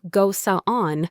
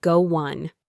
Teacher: Can you hear that little W sound acting as a bridge?